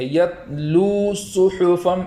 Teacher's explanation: تو اس طریقے سے نہیں پڑھیں گے بلکہ اس طریقے سے پڑھیں گے کہ آواز لوٹ نہ جائے۔ اور آخر میں جو اس کلمے کے واو مدہ ہے اس کو ایک الف کے برابر کھینچ کے پڑھیں گے